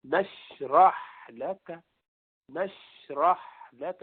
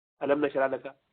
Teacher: شین یہ جو ہے نرمی والا ہے تو لمبا ہے, ہا بھی نرمی والا ہے تو ذرا لمبا ہے. نشرح لک نشرح لک, اس کو جھٹکے سے نہیں بولیں گے علم نشرح لک, یہ ایسے نہیں, یہ طریقہ ٹھیک نہیں.